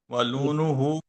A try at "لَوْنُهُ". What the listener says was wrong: لون نہیں نا، لون ہے، لون لام لام کا زبر ہے.